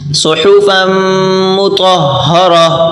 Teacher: تو کو موٹا کریں اور ہا سے ملا کر پڑھیں ، را کو بھی موٹا کر کے پڑھیں گے، صحفا مطہرہ۔